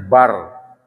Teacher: Kalau tidak ada sakta bacanya bar. Karena lam ketemu dengan ro itu idgham bila gunnah.